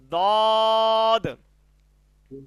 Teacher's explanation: জিহ্বার গোড়ার কিনারা উপরের মাড়ির দাঁতের গোড়ার সঙ্গে লাগাইয়া উচ্চারিত হয় দ, এক সাইড থেকে দদ।